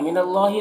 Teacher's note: अल्लाह को पुर पढ़ेंगे, खड़ा ज़बर है, एक अलिफ के बराबर खींचेंगे।